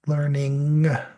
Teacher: It's kind of a nasalized N with a stop that is a G sound. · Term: NG sound